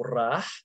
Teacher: Old Arabic ra is retained in the Muslim dialect of Baghdad, so rah as a trill, r, rolling r.